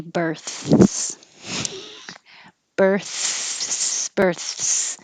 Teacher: The tongue goes out for the th and back for the s, so it takes time.